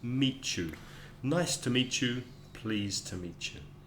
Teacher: please to meet you has a kind of a c h ch in the middle